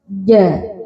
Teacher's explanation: Kalau jim itu mempunyai sifat jahr yang mana nafasnya itu tertahan ja jangan sampai ada desisanya atau nafasnya keluar jadi ja ng karena itu jadi lawan sifatnya.